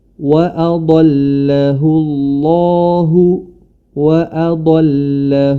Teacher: lafaz Allah yang mana sebelumnya huruf ha damir berharakat damah maka di sini dijelaskan wafakhim maka tebalkanlah dibaca tebal lafzul jalalah